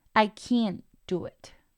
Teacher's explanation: en vez de soltar este esta t lo paro y retengo el flujo del aire